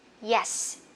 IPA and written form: jes (yes)